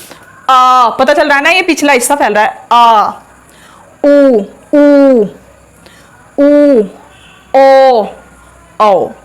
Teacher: जिन स्वरों का उच्चारण करते समय जीभ का पिछला भाग प्रभावित होता है या फिर जीभ के पिछले भाग का प्रयोग किया जाता है उसको बोलते हैं पश्च स्वर।